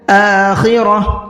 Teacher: بالآخرہ، را کو منہ بھر کے پڑھنا ہے اور ہم نے گولتا پر وقف کیا ہے، اور جب گولتا پر وقف کرتے ہیں تو گولتا ہا بن جاتی ہے